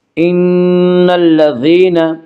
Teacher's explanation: ان نون مشدد غنہ ہوگا، غنہ کی مقدار 1 الف ہے